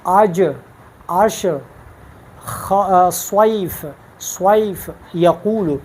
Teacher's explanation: یہ زبان اس کے وسط یعنی اس کے درمیان جب اوپر کے تالو سے لگتا ہے تو اس سے جیم، شین، یا ادا ہوتا ہے